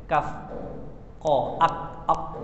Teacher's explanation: Macam huruf kaf kan, kaf dengan qaf. Makhraj dia pangkal lidah sentuh pada langit kan.